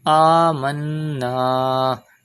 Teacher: Do Gunna in Noon Mushaddad because Noon Mushaddad and Mim Mushaddad are always pronounced with Gunna. Gunna means taking the sound into the nose.